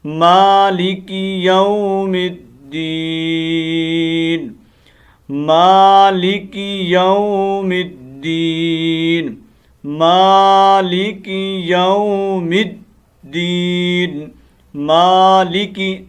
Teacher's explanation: مالک، اس میم کو تھوڑا لمبا کرنا ہے، ٹھیک ہے، مالک نہیں پڑھنا۔